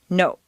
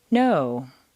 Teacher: in Spanish or Japanese, the word no is, to our ear, clipped or abbreviated